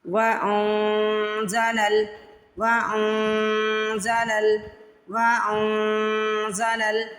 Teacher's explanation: نون کی آواز کو ناک میں چھپانا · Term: اخفا